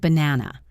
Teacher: the first and last a become schwas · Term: schwa sound